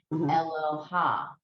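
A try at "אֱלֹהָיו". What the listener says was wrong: Elohav. There's a V, there's a vet, a vav at the end. Elohav.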